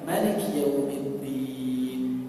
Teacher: mereka enggak memanjangkan Maliki tapi pendek bacanya